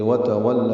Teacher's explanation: وتولى، واو تا پر بھی زبر ہے، پھر واو کو نا تمام ہونٹوں کی گولائی سے ادا کرتے ہوئے لام سے ملا دیں گے